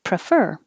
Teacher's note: you're putting the stress on fur